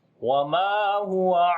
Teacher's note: میم کو لمبا کریں گے، الف مدہ ہے